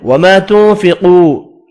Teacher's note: نون کا اخفا ہوگا، قاف پر پڑھیں گے · حمزہ ساکن پڑھا جائے گا وقف کی صورت میں، وما تنفقوا، الف مدہ اور واو مدہ ایک ایک الف کی مقدار میں کھینچ کر پڑھیں گے